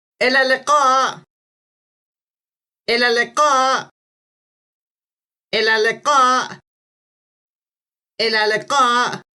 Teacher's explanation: It's a bit like the k sound, but it's pronounced slightly further back in the throat and is often represented in transliterations in languages with the Roman alphabet by the letter Q. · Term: qa sound